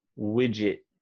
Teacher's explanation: an american is usually not going to pronounce the t at the end